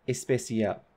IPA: espesial